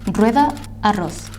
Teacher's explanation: The R has a strong sound when it goes at the beginning of a word or when it is double.